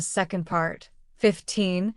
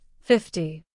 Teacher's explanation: in 50, the stress falls on the first part